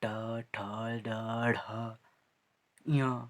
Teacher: मूर्धा क्या है, मुंह में से जो उपला जो हिस्सा होता है वो मूर्धा कहलाता है। और ये मूर्धन्य शब्द है जो कि मूर्धा से बोले जाते हैं।